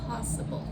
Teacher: Possible. So, you can hear the stress is on the first syllable